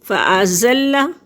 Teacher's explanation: لام مشدد ہے، 2 دفعہ پڑھا جائے گا